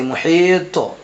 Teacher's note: طا میں قلقلہ ہوگا کیونکہ طا حرف قلقلہ میں سے آ رہا ہے اور طا کے اوپر جزم بھی ہے اس لیے آپ یہاں پر قلقلہ کر کے پڑھیں گے۔